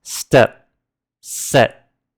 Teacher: we freeze our mouths the moment we say the last consonant which is totally unaspirated